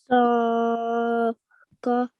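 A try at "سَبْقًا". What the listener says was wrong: Read it without prolonging the scene. Just join the scene to the ba without making the scene long. So sabqa.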